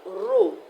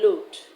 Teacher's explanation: They exchange the R for L sound.